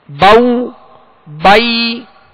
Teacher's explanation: بائی یعنی زبر ادا ہو کر جب یا ادا کریں گے تو آواز کو گرا دیں گے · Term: حروف لین